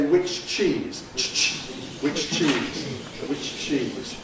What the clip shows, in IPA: ˌwɪʧ ˈʧiːz